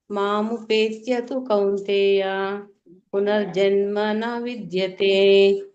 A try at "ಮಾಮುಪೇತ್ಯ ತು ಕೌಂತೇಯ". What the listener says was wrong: ಅಲ್ಲಿ ನೀವು ಗ್ಯಾಪ್ ಕೊಡಿ ಗ್ಯಾಪ್ ಕೊಡದೆ ಇದ್ರೆ ನಿಮಗೆ ಗಂಲಾಗುತ್ತೆ ಮಾಮುಪೇತ್ಯ ಕೌಂತೆಯು ಅನ್ನುವಂತ ಪದ ಸಪರೇಟ್ ಪದ